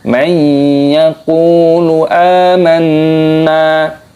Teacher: nun sukun bertemu dengan huruf ya, idgham bi gunnah, dan juga huruf qafnya dibaca panjang karena matobi'i, dipanjangkan 2 harokat saja, jangan panjang-panjang.